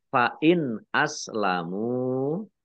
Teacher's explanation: nun sukun bertemu dengan huruf alif, bacaan izhar dibaca jelas